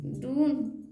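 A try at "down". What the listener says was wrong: है, तो आप ऊ लगा रही, डून पढ़िएगा ना। डून, तो डून सही है क्या। फिर आप फिर डून क्यों बोलिए, आ बोलिए, डा। तो डाउन,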